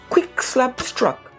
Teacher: features three velar plosives and one bilabial plosive